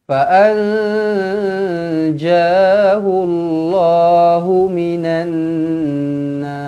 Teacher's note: lam alif lam syamsiah di sini masukkan terus ke dalam Nun okey dengungkan dua harakat · Nun kosong bertemu dengan Jim ikhfa Hakiki dengungkan dua harakat